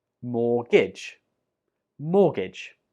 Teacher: We do not pronounce the T when we say this word out loud.